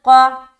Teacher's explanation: تو ہم میثاقکم، اس کے بعد قاف، قاف کو اچھے سے ادا کرنا ہے اور منہ بھر کر بولیں گے۔ قاف جو ہے نا موٹے حروف میں سے ایک ہے، تو اسی لیے اس کو ہم موٹا کر کے پڑھیں گے۔